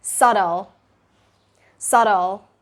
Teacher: you're pronouncing that t, but it's a really quick t sound, so it sounds like a duh. But it's not duh and it's not even t.